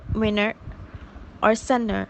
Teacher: In the presence of the pattern formed by a stressed vowel followed by nt, the sound t is not pronounced in some varieties of GA